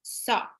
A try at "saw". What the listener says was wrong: Saw. A sound is not very open. No, it's a little close. Saw. Saw.